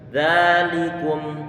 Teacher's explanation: termasuk diantara huruf yang tipis karena dia pengucapannya pangkal lidah Turun ke bawah sehingga tipis